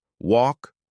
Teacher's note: Walk has an open aw sound, like in law.